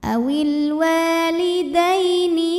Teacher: Ya Sukun didahului baris fathah maka dibacanya lembut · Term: huruf Lin